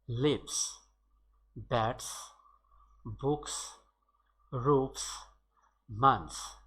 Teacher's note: Notice that in this case S is pronounced as S, not as Z